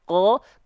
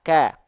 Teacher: Kalau qaf dia lebih condong ke vokal o, ko, kalau kaf ke vokal a, ka.